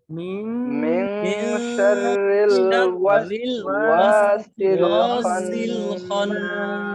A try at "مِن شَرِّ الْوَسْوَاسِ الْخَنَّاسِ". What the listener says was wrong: এক ভাই বলতেছেন শাররেল, শাররেল, রেল না, শাররিল বলেন। শাররিল, হ্যাঁ রিল হবে, রেল এরকম যেন রেল যেন না হয়। রসইকার। হ্যাঁ, মিন শাররিল ওয়াসওয়াসিল খন্নাস।